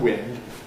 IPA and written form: wɪnd (wind)